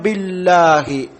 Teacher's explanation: അക്ഷരങ്ങളാണ് അപ്പൊ ബില്ലാഹി ബ നമുക്കറിയാം രണ്ടു ചുണ്ടും കൂട്ടിപ്പിടിച്ചു പറയേണ്ട ശഫത്താനിയാണ് മഹ്റജ് രണ്ടു ചുണ്ടും കൂട്ടിപ്പിടിച്ചു പറയേണ്ട അക്ഷരമാണ് ബി